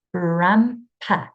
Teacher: there's a m in the middle. My lips are closing.